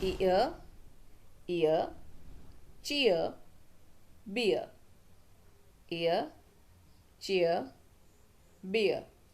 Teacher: अब इसमें ई अ sound आ रहा है, य साउंड नहीं आ रहा है, ईयर नहीं है।